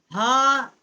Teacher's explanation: ہا اقصائے حلق سے جو سینے کی طرف والا حصہ ہے حلق کا وہاں سے اس کا مخرج ہے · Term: بڑی ہا